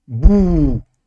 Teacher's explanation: Donc on prolonge la damma, c'est ou. Donc si je prends un ba avec une damma au-dessus comme voyelle, donc le son ou, et que je rajoute cette voyelle longue, ça nous donnera bou. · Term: voyelles longues